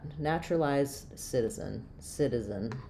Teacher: Um, so even though we have an e n spelling here, it's really more of an I sound at the end of that word, an unstressed reduced vowel